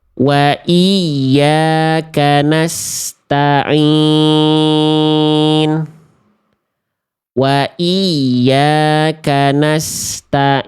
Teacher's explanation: masuk ke dalam rongga hidung sehingga mengakibatkan ain yang sengau, ain yang bindeng, ain yang ngirung.